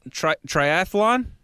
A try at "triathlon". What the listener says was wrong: It's triathlon. There's no athlon. Triathlon. Yeah, but it's not like people say triathlon, like athlon, like marathon. Triathlon. It's triathlon.